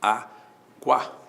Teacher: o U é semivogal, o A é vogal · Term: ditongo